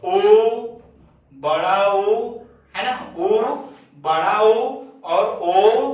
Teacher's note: जिनका उच्चारण करने पर ओष्ठ का आकार लगभग गोल सा हो जाता है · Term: वृत्ताकार स्वर